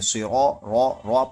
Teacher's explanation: را پر زبر ہے، یہ را موٹا ہوگا، یہاں پر را زبر ہے یعنی را پڑھیں گے، اس طریقے سے پڑھیں گے۔